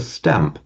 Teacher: the nasal, the n or the m and the ng, are changing to be the same as where the next consonant is